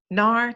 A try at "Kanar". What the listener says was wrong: Hi, it's actually Kanar, which is fine. Yeah, well, you pronounce the K, so it's Kanar.